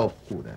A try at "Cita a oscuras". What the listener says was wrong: Usted sí ve una palabra que no la pronuncia. Porque hay que meter